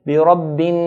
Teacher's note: So whenever noon or mim is pronounced, there's a nasalization, a sound from the nasal passage automatically comes with these 2 letters. Now noon here has a shadda. So we hold the noon. بِرَبِّن, hold, بِرَبِّن, then let go.